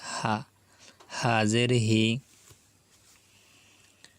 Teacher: হাজের হি, এই হা কিন্তু গলার ভিতরে নেওয়া যাবে না, কণ্ঠনালীর ভিতরে নেওয়া যাবে না, এটাকে স্বাভাবিকভাবে বলতে হবে, কণ্ঠনালীর শুরু থেকে উচ্চারিত হয় হা